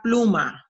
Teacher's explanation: en la palabra pluma el acento prosódico está en la primera sílaba